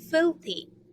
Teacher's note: So we have two syllables and then we will put the stress on the first one.